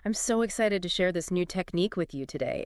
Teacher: So imagine starting maybe mid- pitch. Then as you say excited, your voice naturally rises a bit, shows the energy. Then maybe when you get to the key word technique, it peaks a little higher. You're emphasizing what you're excited about. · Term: upbeat natural version, Rising on excited, peaking on technique